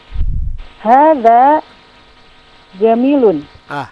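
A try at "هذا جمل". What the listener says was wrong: Hadha jamalun. Nah, kalau jamilun dia ada ya setelah mimnya. Ini tidak ada ya.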